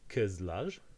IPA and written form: kɯzlar (kızlar)